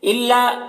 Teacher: लाम ये मुशद्दद हर्फ है तो पीछे वाले मुतहरिक हर्फ लाम से मिलकर पढ़ा जाएगा